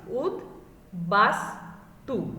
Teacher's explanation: উদ উপসর্গের সঙ্গে বফলা যুক্ত হলে বয়ের উচ্চারণ বহাল থাকে